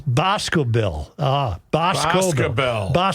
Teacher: Emphasis on the first syllable